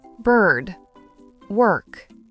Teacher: Le son est utilisé quand la syllabe est accentuée. La langue recule légèrement et se courbe pour produire le son du R. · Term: voyelles air colorées, voyelles R colorées